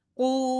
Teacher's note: قاف موٹا واو مدہ کرتے ہوئے قو